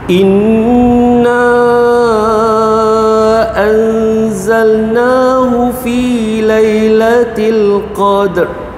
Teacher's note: Inna tadi nun bertanda sabdu, wajibul guna, dengung dua harakat ya.